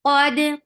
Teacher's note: For fatha, open your jaws. Qad, qaf is heavy. For fatha, open your jaws. Attach with dal. Dal will get sifa of qalqala.